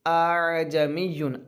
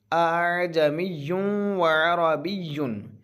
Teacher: दूसरा हमज़ा है, इसको हमज़ा और अलिफ के बीच में से करना है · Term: तसहील का हमज़ा